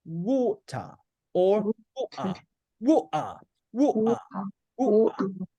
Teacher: British English don't usually pronounce the R sound. They tend to say So instead of saying water, water.